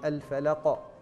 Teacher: الفلق قلقلة وقاف مستعلية جميلة